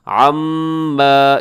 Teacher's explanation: میم مشدد ہے تو یہاں پر آپ نے غنہ کرنا ہے، تھوڑا سا لمبا بھی کیجیے گا